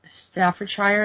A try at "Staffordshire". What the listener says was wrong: Hang on a second, Staffordshire. Yes, it's not Shire. It's a short I, Staffordshire. It's the way Americans always say Shire. You always say Shire instead of Shire, but you know, it's just a local thing.